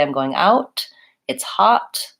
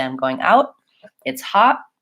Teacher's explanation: I can always say I'm going out, it's hot. I can always release that T, but more often than not, Americans will say I'm going out, it's hot. Most of the time, they won't release the T.